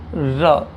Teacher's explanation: वह व्यंजन जिसके उच्चारण में जिह्वा रुक रुक कर हवा का मार्ग रोकती है। इस कारण जिह्वा व हवा में कंपन सा प्रतीत होता है। · जीवा खड़ी हो जाती है, फिर हट जाती, फिर खड़ी हो जाती, फिर हट जाती है। इस कारण इसमें हवा कंपन सा प्रतीत होता है, इस कारण से प्रकंपित, और हवा लुढ़कती सी प्रतीत होती है, इस कारण लुंठित व्यंजन भी कहा जाता है।